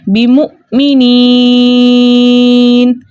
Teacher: یا مدہ کو 2 حرکت کی مقدار کھینچ کر پڑھتے، لیکن آگے نون کا سکون عارضی جو ہے وقف کی صورت میں آ رہا ہے، اس لیے یہاں پہ مد بن رہی ہے مد عارض وقفی، جس کی مقدار 2 4 6 حرکت ہے، لیکن 6 حرکت کی مقدار کھینچ کر پڑھنا زیادہ بہتر ہے